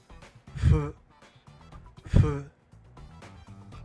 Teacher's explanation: 个音就在旁边，我们就知道其实它念起来跟很接近，只是是用嘴唇跟牙齿，这个音则是改用两片嘴唇。然后因为是无声的音，我们就可以知道 念的时候声带不要震动，所以念出来就是呼的音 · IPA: ɸ